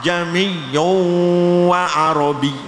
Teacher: Membaca hamzah dibaca antara hamzah dan alif. Hamzah yang kedua dari lafal a ya, itu dibaca antara hamzah dan alif. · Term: tashil